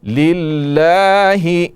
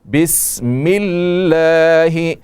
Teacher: لفظ اللہ کا لام باریک پڑا جائے گا